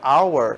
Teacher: hour não é um som de R, é um som do H mudo e é um som vocálico